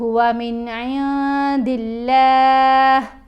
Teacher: اب لفظ اللہ کی یہ جو لام ہے اس کو ہم نے باریک پڑھنا ہے